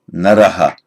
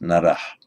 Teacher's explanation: often hear it said naraha, with the echo of the vowel following the naraha.